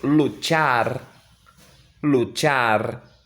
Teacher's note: E nós temos agora o dígrafo CH. Ele tem um som chiado